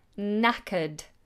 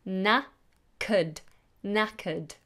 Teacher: And it's a silent K. So, we just go straight into a n.